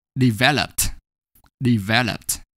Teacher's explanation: For example, the base form develop ends in a vowel O followed by a single consonant P, and the last syllable lup is not stressed. Actually, the second syllable there is stressed in this case, not the last syllable lup.